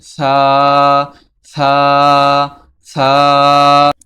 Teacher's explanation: জিহবার আগা সামনের উপরের দুই দাঁতের আগার সঙ্গে লেগে সা উচ্চারিত হয়।